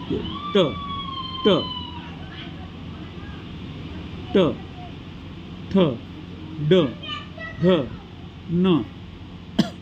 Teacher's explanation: जे वर्ण उच्चारताना जिभेचा शेंडा मूर्धेला जाऊन भिडतो त्यांना मूर्धन्य वर्ण असे म्हणतात.